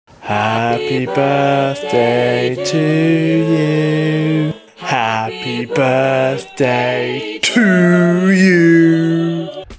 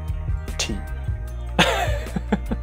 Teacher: you need to place that end of your tongue on the roof of your mouth, just behind your front teeth, and apply pressure and release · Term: proper T's